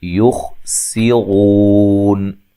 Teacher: خا کو موٹا ادا کریں گے، سین کو باریک سیٹی سے، رو واو مدہ ہے تو وقف کی صورت میں مد کر سکتے ہیں۔